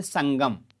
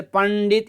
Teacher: वर्ग त वर्ग प वर्ग इनका आखिरी यानी पंचम वाले वर्ण इनका उच्चारण स्थान अनुनासिक वाले हैं नाक यानी इनके उच्चारण में हमारा साउंड नाक से निकलता है